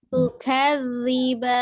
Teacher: ada penekanan di huruf dzalnya, tapi tetap huruf dzal itu huruf tipis ya, bukan huruf tebal.